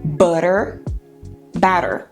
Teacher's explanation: Nós transformamos o T num som vibrante. R r r. Então, se você colocar a mão aqui, R, você vê quando você faz um R, as cordas vocais vibram. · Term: flap